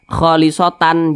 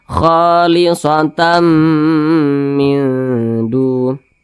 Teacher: didengungkan itu ditahan, dipanjangkan suaranya kira-kira 2 harakat atau kira-kira 2 ketukan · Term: idgham bi gunnah